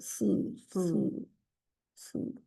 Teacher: सू जो मोटा भी है, पीछे से जुबान की जड़ ऊपर उठती है।